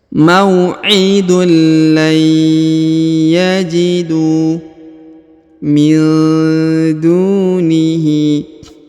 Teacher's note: Huruf du dibaca 2 harokat karena di depannya terdapat waw sukun dan huruf alifnya tidak dibaca atau tidak dianggap ya.